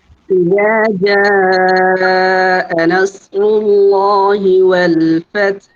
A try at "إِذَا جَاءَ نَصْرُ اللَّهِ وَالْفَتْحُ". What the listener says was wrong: সুন্দর হয় নাই। ইজতিমাই সাকিনিনটা একেবারেই সুন্দর হয় নাই। 10% নেই, হ্যাঁ? আরো সুন্দরভাবে করতে হবে এবং নাসরুল্লাহ এখানে কিন্তু সদ ভাইয়া, ঠিক আছে?